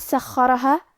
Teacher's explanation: حرف الخاء کی ادائیگی حلق کے اوپر والی حصے سے ہے. کیونکہ خا حروف تفخیم میں سے ہے تو ہم یہ حرف کو بھاری آواز میں پڑھیں گے اور کیونکہ اس پہ تشدید ہے تو ہمیں خا کو 2 حرف کے برابر پڑھنا ہے.